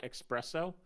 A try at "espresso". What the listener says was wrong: there's no X in espresso not it's not from Spain you don't need to say espresso like that